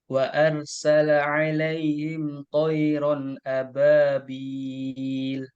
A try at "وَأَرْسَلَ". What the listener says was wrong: roknya kurang tebal. Wa arsala alaihim.